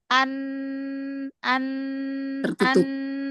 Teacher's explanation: Jalan suara keluar dari rongga mulut itu ketutup karena tertutup makhraj.